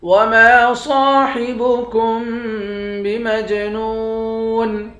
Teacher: میم کو جیم کے ساتھ ملا کر جیم پر قلقلہ کریں گے، جیم حروف قلقلہ میں سے ہے۔